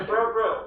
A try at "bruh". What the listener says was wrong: You say it wrong. It's not bro. It's bruh.